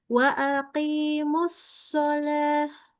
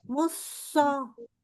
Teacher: huruf shad kurang tebal, kurang sofir. Jadi harus sofir ya.